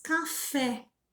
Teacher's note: qual a sílaba tônica? É o fé, né? É o fé, é a sílaba tônica.